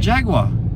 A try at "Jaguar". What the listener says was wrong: You just adding syllables and churching that up.